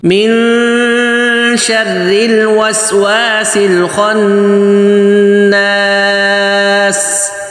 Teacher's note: خوا موٹا بول کے منہ بھر کے اوپر تالو کی طرف سے آواز لگائیں اور نون پہ غنہ کرنا ہے